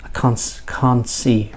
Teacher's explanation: so the T becomes silent